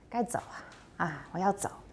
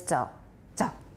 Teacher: the third tone doesn't rise